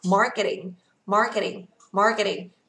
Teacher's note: trọng âm của chúng ta đọc ở dưới nhất này, đọc là mar, vì âm này là âm a dài ạ. Và ở đây nó có chữ r, các bạn phải nâng lưỡi kéo dài lên cho cô nhá. · Âm T kèm giữa hai nguyên âm chúng ta được quyền đọc gần giống như D ở tiếng Việt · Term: flap T